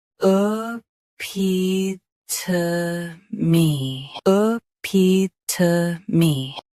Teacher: Both US and UK have the same pronunciation of this word. Stress P. Keep T soft and finish with clear me.